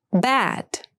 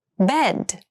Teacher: Bad has the more open sound and bed has the more closed sound.